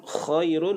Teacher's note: khairun huruf kha di hujung kerongkong. Kha itu menjadi lin, lembutkan.